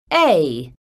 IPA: eI